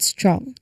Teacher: Just like with SP and ST, the T sound here is unaspirated, making it blend seamlessly from the S into the R. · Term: STR cluster